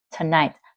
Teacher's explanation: Không phải là tonight nha, trọng âm ở night, tonight. Giống như kiểu today, trọng âm ở day.